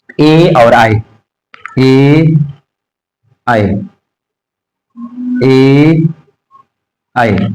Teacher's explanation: ए आई, ए आई, कंठ तालु से बोला जाता है, कंठ, कंठ, ये सही से लिखो भैया, कंठ तालु, कंठ तालु, कंठ तालु से बोला जाता है, इसको कंठ तालव्य कहा जाता है, इसको कंठ तालव्य, इसको कंठ तालव्य के नाम से भी जाना जाता है।